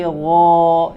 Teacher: yang tebal gho memang arahnya suaranya ke langit-langit